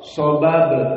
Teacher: ba di sini dalam keadaan sakinah qalqalah as-sughra